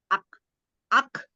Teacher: syiddah pertama-tama masuk ke dalam makhraj kaf, lalu hembuskan napas sambil meregangkan makhraj